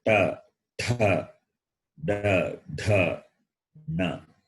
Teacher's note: When you say ta, ta, da, dha, na. So the tongue touch the cerebrum, the roof of the mouth. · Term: cerebrals